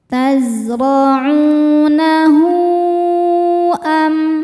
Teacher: Hu mad silah tawilah, sebab ada hal dhamir yang diapit 2 huruf hidup dan setelahnya adalah hamzah a. Maka hal dhamirnya panjang, boleh 4 boleh 5 harokat.